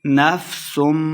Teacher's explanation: نفسم، میم شدد ہے، سین کو سیٹی کے ساتھ پڑھیں گے، اور سین کو میم کے ساتھ ملانا ہے، اور غنہ بھی کریں گے